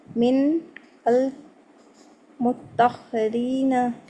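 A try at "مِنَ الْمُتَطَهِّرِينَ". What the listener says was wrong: हाँ, मिनल मुतताहिरीन, ता और तोएं अलग अलग है, मुतताहिरीन।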